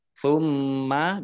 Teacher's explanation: mim bacaan Idgham mutamasilain atau idgham mimi ditandai mimnya ada tasdidnya mim tasdid dibaca ghunah atau mendengung ditahan dua harakat